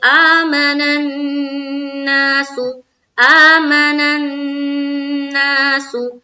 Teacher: یہ مد منفصل، یہاں پر کھینچیں گے، آمن الناس، آمن الناس، نون مشدد کا غنہ کریں گے